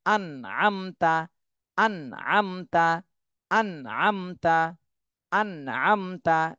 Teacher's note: এরপর এটা দেখেন হামজা নুন জবর আন, এই যে নুন সাকিন চলে আসছে, নুন সাকিনের পরে আইন, এটা আইন ইজহারের হরফ, তাহলে এই নুন সাকিনে গুণনা করা যাবে না, স্পষ্ট করে পড়তে হবে